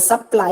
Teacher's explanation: In the word supply, again, ply is given more stress. That is why it is marked as unstressed and then stressed.